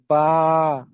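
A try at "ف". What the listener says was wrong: পা নয়, ফা।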